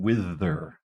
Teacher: to this sound finally in wither [Music] withth this is voiced it's made with our tongue between our two teeth our top and bottom teeth so this is going to be interdental and the symbol we